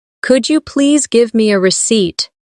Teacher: Emphasize receipt, so it's clear.